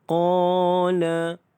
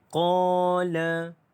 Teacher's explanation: qa dibaca dengan panjang 2 harakat kerana mad asli huruf alif.